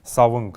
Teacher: буква «н», она не совсем полноценна в калмыцком языке и является сочетанием «н» и «г», «н», поэтому «савынг» здесь, для того, чтобы уточнить, что этот звук такой, мы будем добавлять вот такой вот согласный «г», «савынгур», то есть по направлению к мылу.